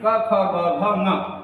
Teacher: इनका उच्चारण स्थान कंठ है इसलिए इन्हें कंठ वर्ड कहते हैं